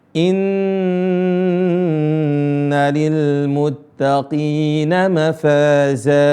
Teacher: Ada nun tasydid, ini ditahan 2 harakat.